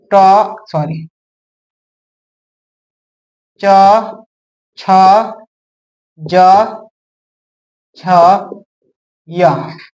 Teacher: दूसरा जो होता है च वर्ग, ये कहां से निकलता है? ये तालु से निकलता है।